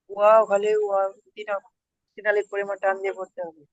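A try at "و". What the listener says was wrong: মাশাআল্লাহ, খুব সুন্দর।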